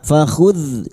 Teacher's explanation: dal sukun jangan dipantulkan ya, bukan kolkola. Fakhudh jangan dipantulkan.